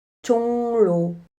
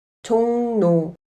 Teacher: 받침 이응은 으로 발음합니다. 하지만 리을은 르로 발음하지 않고 느로 발음합니다. 종로는 종노로 발음합니다. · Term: 리을 비음화